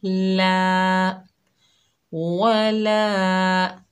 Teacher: आगे अलिफ खाली है, ये अलिफ मद्दा है, एक अलिफ की मिकदार खींच कर पढ़ेंगे